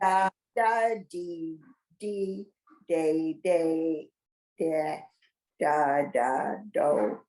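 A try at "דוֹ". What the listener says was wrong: No, the last 2 are not dodos. 3 dots diagonally are do, and the vav with the dot in its belly like he's got punched.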